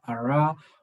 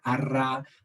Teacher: like r in English, the approximant ara, or the trills in Spanish, arra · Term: rhotics